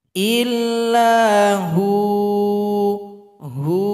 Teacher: waw disukunkan, ha yang berada sebelumnya dipanjangkan 2 ketukan. Karena di sini kalau berhenti sudah menjadi mad asli atau mad tabi'i.